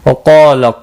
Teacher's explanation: क़ाफ और अलिफ दोनों पूर पढ़े जाएंगे। हुरूफ क़ाफ मुस्तालिया है, पूर पढ़ा जाएगा।